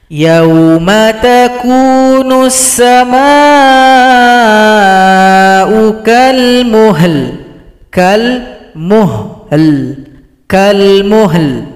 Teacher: Perhatikan kalau berhenti lam disukunkan, berikan bunyi vokal.